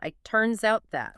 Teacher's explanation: The T in it is almost entirely swallowed, and the S at the end of turns forcefully links directly into the O of out. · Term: complete blending